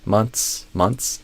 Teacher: months and months is kind of a special case where you can end up kind of just doing a ts sound almost like pizza months months.